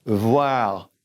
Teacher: then that R is in the back, so it's revoir, and it runs together